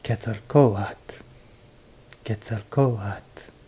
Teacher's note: the second to last syllable is a rising and falling tone